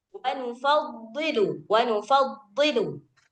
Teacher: Itbaq. Bot dia punya sifat itbaq. Jadi ketika kasroh dia harus tetap tebal sebagaimana posisi dia fathah ataupun dhammah.